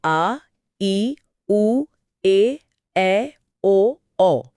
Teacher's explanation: इन्हें बोलने में ह्रस्व से दुगना समय लगता है। यानी दो मात्राएं। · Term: दीर्घ स्वर